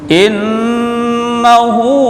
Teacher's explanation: Tahan bacaan in, tekan innahu hu masilah qasirah satu alif